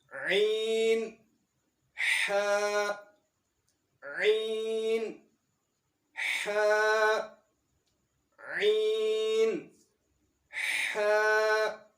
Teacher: یہ حلق کے درمیان میں سے ادا ہونے والے یہ دونوں حروف ہیں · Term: عین اور ہا